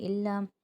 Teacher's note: الف مدہ بن رہا ہے، ایک الف کی مقدار کھینچیں گے۔